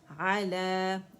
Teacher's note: مکسورہ لام کی آواز کو کھینچ رہی ہے 2 کاؤنٹ کے لیے